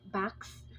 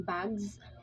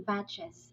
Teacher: S sound as in backs, and Z sound as in bags, and a vowel plus Z sound as in batches